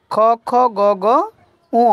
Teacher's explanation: কণ্ঠ ব্যঞ্জন মুখের কোন অংশে উচ্চারিত হয় সঠিক উত্তর হবে জীবের পিছনের অংশে